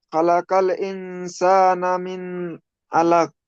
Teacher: এখানে নুন সাকিনের পরে সিন এসেছে হরফে ইকফা। নুনকে গুণনা করতে হবে।